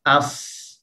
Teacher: Hams dan dengan rakhawah sifat yang lemah. Okey, ada angin yang mengalir, ada suara yang mengalir.